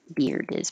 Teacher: can't skip the D otherwise it'll sound like beer so beard you will hear the D if there's a vowel after it